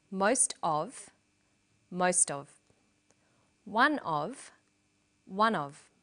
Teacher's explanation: Notice that of in these phrases is unstressed.